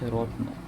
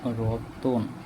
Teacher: র এর সাথে অ উচ্চারিত হইতেছে, তার মানে মাঝখানে একটা স্বরধ্বনি অতিরিক্ত উচ্চারণ হইতেছে, তাই এটা চলে আসছে, এটার নাম হইতেছে মধ্য স্বরধ্বনি। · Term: মধ্য স্বরাগম